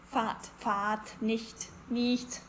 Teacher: Generally, I would say that Austrians open their mouth a little bit more when it comes to A, E and E sounds.